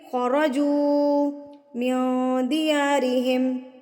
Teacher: پیش والے حرف کو آپ نے لمبا کر دینا ہے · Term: واو مدہ